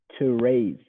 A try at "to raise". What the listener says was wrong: That's good. Yeah.